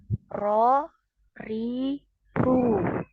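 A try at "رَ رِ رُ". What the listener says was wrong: Belum naik ya pangkal lidahnya. Jadi dinaikkan itu sama seperti ketika kita mengucapkan huruf o ya.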